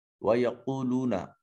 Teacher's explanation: قاف حرف مستعلیہ ہے، اس وجہ سے اس کو مفخم ادا کریں گے